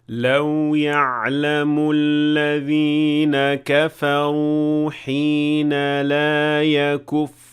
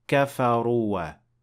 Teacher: Here it comes at the end of the word, and this is actually a very common thing in the Quran, that you see an alif at the end of the word that is not pronounced. And here, kafaru ends with an alif, but you will not pronounce it. You will not say kafaruwa.